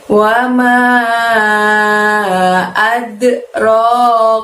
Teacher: Kalau ada wama lalu ada adroka, manya panjangnya 5.